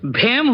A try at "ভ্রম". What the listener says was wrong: হেম নয়, ভ্রম। এটাতেও রফলা লাগবে।